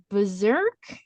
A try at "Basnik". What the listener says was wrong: Basnik? There's no R in there.